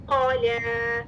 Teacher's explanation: क़ाफ के लिए ज़बान की जड़ कहाँ लग रही है, नरम तालु से, ठीक है, फिर लाम मुरक़क़, 2 काउंट्स, लाम मुरक़क़, क़ला क़ला क़ला क़ला नहीं, क़ला, आवाज में इतना डिफरेंस हो, ठीक है, मुफ़ख़म मुरक़क़।